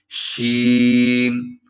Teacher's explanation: شین میں ایک صفت ہے تفشی، یعنی آواز پھیل جاتی ہے